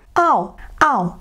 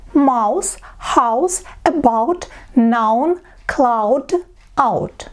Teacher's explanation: Первый звук произносится А. На второй звук У вы начинаете его произносить, но как бы вам лень становится, вы бросаете все. Ау, ау. И на У бросили. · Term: дифтонг